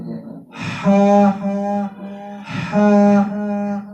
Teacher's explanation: تو یہ گلے کے درمیان والے حصے سے ادا ہو گا